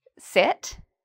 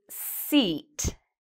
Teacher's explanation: So for example, if I want to say sit, that's a short ih sound, sit, versus seat, which is a long sound